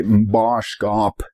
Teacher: for conjugations that begin with n, it can sound like an M, especially with verbs that start with a B, like bope.